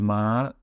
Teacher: that's a high tone we're pronouncing that with a drawn out High tone